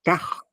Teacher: Então, por exemplo, quando eu falo carro, eu uso uma entonação e forço esse R, eu alongo esse R, e ele fica um R alongado